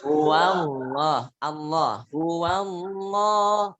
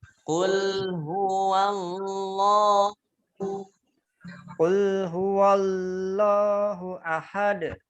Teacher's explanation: Lamnya tebal, Karena sebelumnya fathah.